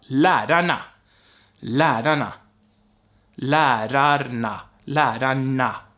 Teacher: my tongue is moving backwards when I'm saying N with an R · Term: retroflex sound